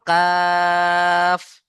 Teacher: কাফ তিন আলিফ টান দিতে হবে